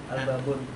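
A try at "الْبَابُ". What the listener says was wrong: Oh, nggak boleh on, ada al. Al-babu. Bahasa ini ya, bahasa Arab, bukan bahasa Indonesia. Al-babu, berarti alif lamnya adalah alif lam qamariyah ya.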